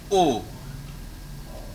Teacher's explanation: we pronounce it simply as O. O. O. With rounded lips.